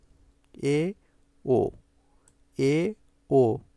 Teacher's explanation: এ আর ও উচ্চারণ করার সময় তোমার জীবাটা একটু নিচে নেমে আসবে একটু নিচে নেমে আসবে অর্থাৎ ই ও উচ্চারণ করার সময় তোমার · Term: উচ্চমধ্য